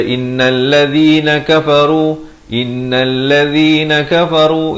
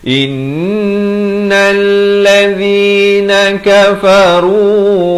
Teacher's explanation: Di sini wajib dengung 2 harakat.